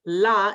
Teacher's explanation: la is a dental sound, so behind the teeth.